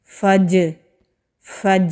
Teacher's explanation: जीम साकिन हो तो वहाँ पर भी कलकला होता है, यानी कि आवाज़ पलट के आएगी। फ़ज, فج، یہ جو آواز پلٹ کے آ رہی ہے اس کو قلقلہ کہتے ہیں۔